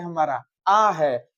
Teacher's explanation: विवृत स्वर है। इसमें मुख द्वार एकदम पूरा खुला हुआ रहता है, अर्थात सबसे ज्यादा खुलता है।